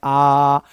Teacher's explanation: विवृत्त स्वर में मुंह पूरा खुल रहा है। जितना मैक्सिमम खुल सकता है आप इसको ऐसे बोल सकते हो।